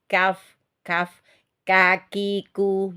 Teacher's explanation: berada di pangkal lidah bertemu dengan langit lunak dan keras